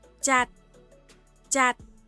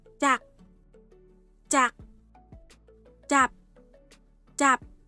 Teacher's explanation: 2 từ vựng mới tạo này cũng được đọc bằng tone đi xuống